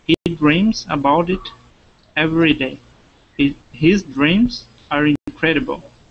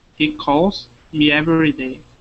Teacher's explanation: The s is voiced after a voiced sound.